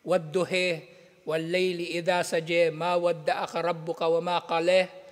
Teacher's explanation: yung alif maksura binabasa nila bilang e. E, ng tunog niya ay nasa pagitan ng a at i.